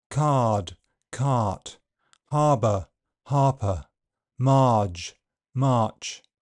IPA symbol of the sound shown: ɑː